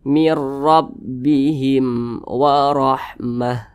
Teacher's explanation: huruf mim bukan huruf ba G maka hukumnya izhar syafawi Nah maka dibaca jelas tidak berdengung